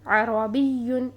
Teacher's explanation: با کی زیر کو فوراً یا مشدد کے ساتھ ادا کرنا ہے، عربیٌ۔ اس کو ہم اگر ٹائم لگاتے اور نبر نہ کرتے، آواز کو نہ اٹھاتے تو یہاں یہ لفظ بنتا عربیٌ، جو کہ غلط ادائیگی تھی۔